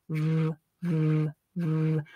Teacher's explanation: V is a fricative sound, which means that it's a sound where air passes through, but where there is some friction creating obstacle in the way. In this case, your upper teeth against your lower lip. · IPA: /v/